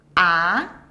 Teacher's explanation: Second tone, ah, start from a lower and sharply get up